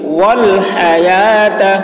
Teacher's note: واو میں یہاں پر کوئی حرکت نہیں ہے تو واو کو نہیں پڑھیں گے, یا میں کھڑا زبر ہے یا کو کھینچیں گے